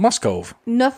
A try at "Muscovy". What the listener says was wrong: Muscovy. There's a Y at the end.